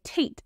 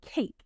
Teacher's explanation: A shorter way to say this is velar fronting. It's when kids replace the sound that happens in the back of their mouth with a sound that happens in the front of their mouth because it's easier to say.